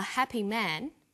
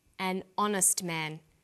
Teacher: the H is not pronounced